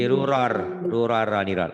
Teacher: Nun mati atau tanwin ketemu ro dileburkan dimasukkan tanpa dengung, tanpa ditahan. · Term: idgham bila gunnah